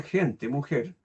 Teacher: Pero para nosotros eh digamos los hispanoamericanos como que nos cuesta un poco pronunciar eso, más cómodos y pronunciamos simplemente gente mujer, adelantando el punto de articulación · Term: Articulación muy adelantada